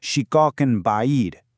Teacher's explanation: Whenever a silent N or a tanween is followed by the letter ba, that N sound completely transforms into an M sound. So in this phrase, shikakan ba'id, you don't actually hear the end. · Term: iqlab